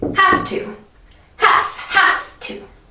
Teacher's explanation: This letter is a V, but when we use have to, we don't say V, we use F. So it sounds like have to.